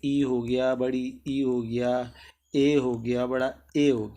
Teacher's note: अग्रस्वर में क्या होता है ना, तो जीभ का आगे का भाग ऊपर उठता है